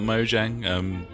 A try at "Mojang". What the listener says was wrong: I believe the J is silent. Mojang.